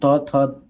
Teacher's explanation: दांत और जीभ के स्पर्श से दंत वर्ण बोले जाते हैं